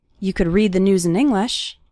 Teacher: the stressed syllables are read news and the first syllable of English